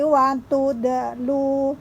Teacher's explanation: huruf da salah satu huruf qalqalah yang harus memantul ketika dibaca. Wa tudlu, lu 2 harokat.